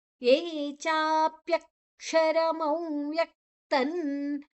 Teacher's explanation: ಅಲ್ಲಿ ಅನುನಾಸಿಕ ಅನುಸ್ವರವನ್ನ ನ ಆಗಿ ನಾವು ತಗೊಳ್ತೇವೆ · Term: ಅನುಸ್ವಾರದ ಉಚ್ಚಾರಣೆ